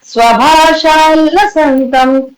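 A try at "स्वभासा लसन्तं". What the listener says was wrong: Here ஸ்வபாஷா கிடையாது, ஸ்வபாசா தான் வரும். ஸ்வபாசா. பாசானா வந்து ஜொலிக்கிறது, ஷைனிங். பாஷானா லாங்குவேஜா மாறிடும். அதனால ஸ்வபாசா.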